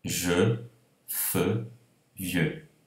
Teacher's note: todas elas terminam com uma vogal, essas sílabas, e portanto são vogais fechadas.